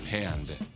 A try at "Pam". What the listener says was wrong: With an M. There's no D. It's Pam.